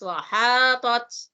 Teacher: Penyebutan huruf to dengan ta bertemu. Nah, to-nya tebal, ta-nya tipis.